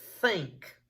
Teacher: Only air coming through those air coming out the mouth. Vocal cords aren't vibrating. So what does that mean? It's voiceless.